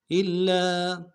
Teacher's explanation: حمزہ کو لام کے ساتھ ملانا ہے، لام کے اوپر تشدید زور دیں گے، لام کے ساتھ الف مدہ ہے، ایک الف دال میں کھینچیں گے